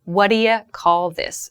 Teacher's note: that do you becomes reduced. Do you becomes dia.